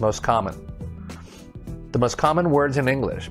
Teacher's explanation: pause bad that was bad timing next one is most common we usually drop the t sound where it sounds like most common the most common words in